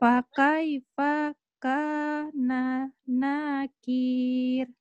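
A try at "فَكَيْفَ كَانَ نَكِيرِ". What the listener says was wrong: Fakai fakah. Di situ fanya pendek ya. Fakai fakana nakir.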